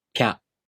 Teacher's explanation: To pronounce Pya, you first make the tongue position of the [pʲ] sound. Then, the tongue moves into position for the [a] vowel.